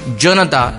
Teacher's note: ज चा उच्चार करताना जीभ टाळूला स्पर्श करते, म्हणून या वर्णाला तालव्य वर्ण असे म्हणतात